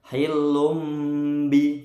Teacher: tanwin ketemu ba bacaan iqlab dengung mingkem ya agak lama